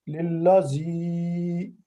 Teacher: یہ زی اس لیے لمبا کر رہے ہیں کہ یہ یا ساکن آگے آ رہا ہے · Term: حرف مدہ